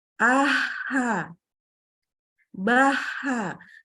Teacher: Ba, a, ta, a, gitu ya, langsung berhenti. Kalau H justru dia mengalir suaranya · Kemudian yang kedua ada huruf H. H itu adalah huruf yang keluar hembusan udara atau hams